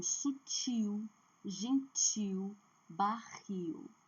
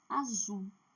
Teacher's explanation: Porque a última sílaba está com duas letras que são fortes e que tem o poder de mudança de eh da tonicidade. Então, sutil, gentil, barril, a última sílaba é forte. Azul, forte a última sílaba.